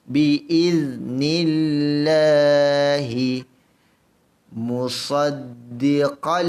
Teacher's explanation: Allah baca nipis kerana sebelum Allah ada huruf nun yang berbaris bawah. Baca Allah ini dengan nipis.